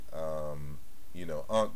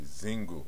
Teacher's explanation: And that K sound was palatalized, as we can see with the I behind the Z sound. And it was palatalized into Z.